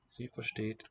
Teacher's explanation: The H here is not a consonant. It tells you to lengthen the vowel.